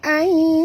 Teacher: Nun mati bertemu ya, kita kena masukkan bunyi, ya. Nun ini terus ke dalam ya tanpa, ya, membunyikan nun. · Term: idgham al-gunah